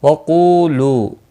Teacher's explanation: قو اور لو واو مدہ ہے، دونوں ایک ایک الف کے برابر کھینچ کر پڑھیں گے